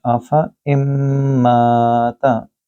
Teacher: افا اماتا، یہاں آفا نہیں کہہ سکتے کیونکہ الف کے اوپر گولدار ہے، الف زائد کہتے ہیں، اس الف زائد کے کیس میں آپ نے لمبا نہیں کرنا بلکہ چھوٹا پڑھنا ہے، آفا اماتا۔